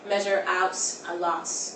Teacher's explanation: well she goes measure out a lot she does a sound it's a very wet te as if you're putting an s on the end of it · the terminal T sound will go to a TS sound as well · It's a very wet T, as if you're putting an S on the end of it. To the point where I thought she was saying lots.